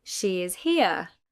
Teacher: With falling intonation is a statement.